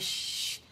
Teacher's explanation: यानी मजहूर लेटर नहीं है बल्कि ये हम्स वाला लेटर, हवा फील होती है।